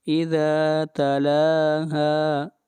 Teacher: لام کو بھی لمبا کریں گے اور ہا کو بھی 1 الف کے برابر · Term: مد اصلی